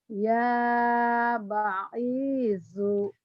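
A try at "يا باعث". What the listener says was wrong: Banyak panjang. Ya Ba'ithu.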